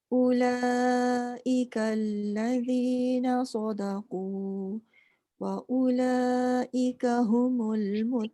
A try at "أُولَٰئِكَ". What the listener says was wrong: Sikit lagi panjang dia. Macam Makak buat ulaika allazi tadi cukup. Wa ula tu pun kena sama juga.